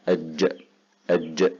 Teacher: والقلقلة اضطراب أو ذبذبة تخرج تصاحب هذا الحرف إذا جاء ساكنا